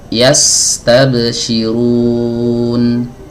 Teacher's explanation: Huruf sin aliran suaranya lebih panjang daripada huruf nun. Huruf ba tidak mengalir sama sekali. Yas dialirkan.